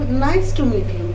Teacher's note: falling intonation, the pitch of voice falls at the end of sentence